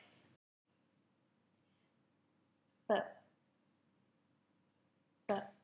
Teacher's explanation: This is a stop and it is voiced. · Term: bilabial